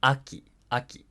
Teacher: these words descend rather than Ascend in Pitch after the first syllable and thereby fall into the initial high pitch accent category okay · starts High comes down